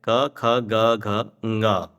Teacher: इसको स्पर्शीय कहते हैं क्योंकि जीभ का स्पर्श होता है। कंठ से जब स्पर्श होता है कंठ से जो उत्पन्न होता है उसको क वर्ग कहते हैं।